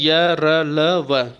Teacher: इनमें जिह्वा पूरा स्पर्श नहीं करती है, ठीक ना। जो जिह्वा है हमारा जीव, वह पूरी तरह से स्पर्श नहीं करती है, और स्पर्श करते समय थोड़ा सा स्थान शेष रह जाता है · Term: अंतस्थ व्यंजन